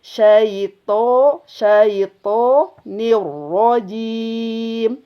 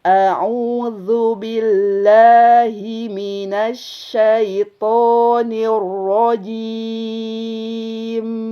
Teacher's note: Ro dalam harokat fathah maka hukumnya tebal. Ya. Maka sama seperti to, arah suaranya dikeataskan. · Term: ro tebal